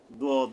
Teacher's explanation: অর্থাৎ জিহ্বার আগাটা সামনে দাঁতের সাথে মিলবে না এটা কি হবে জিহ্বার গোড়া বাম পাশের কিনার উপরে মারির দাঁতের গোড়া থেকে মোটা ভাবে আদায় হবে অর্থাৎ উপরের মারি গোড়ার থেকে জিহ্বার কিনারাটা যাইয়া লাগবে দখানে সব